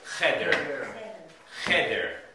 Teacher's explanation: The accent's on the first syllable, not the second.